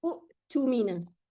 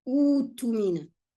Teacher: The hamza is dropped and it becomes a waw. So I read it as u'tumina.